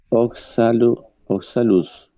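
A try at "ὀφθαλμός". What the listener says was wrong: Esa se pronuncia como una F. Eso sería oftalmos. Oftalmos. Entonces, oftalmos.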